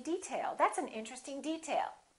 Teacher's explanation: if it's a noun we say detail that's an interesting detail first syllable stress